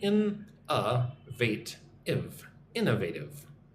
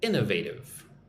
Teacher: Most emphasis goes on the first syllable.